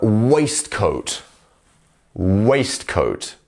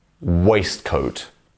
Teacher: once again, the first syllable is our stressed syllable.